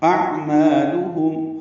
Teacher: حمزہ اقصی حلق سے، عین وسط حلق سے ادا کریں گے